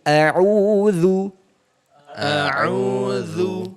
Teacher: makhrajnya huruf dzal itu adalah ujung lidah bertemu dengan ujung gigi seri atas. Nah, cara pembacaan baca huruf dzal sa sama dha itu digigit ujung lidahnya.